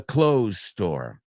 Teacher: nosotros nos comemos esa TH, and it sounds exactly the same